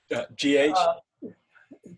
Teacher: the gh is a voiced uvular fricative · your tongue is doing what you do for an english k like that except you're voicing and you're and you're letting the air through at the same time